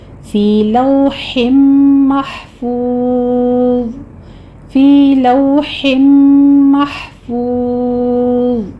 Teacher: محفوظ میں حا پر حمس ہوگا اور آگے واو مدہ کے بعد ہم ضا کو پر پڑھتے ہوئے یہاں پر ہم ساکن کر دیں گے